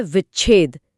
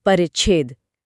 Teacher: सांस के प्रवाह में एक छोटा सा गैप आता है और मुंह अपने आप एक च की ध्वनि पैदा कर देता है। इसलिए वी प्लस छेद बन जाता है विच्छेद।